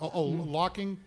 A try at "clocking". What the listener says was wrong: Clocking with an L. You don't say it without the L. I mean, you can, but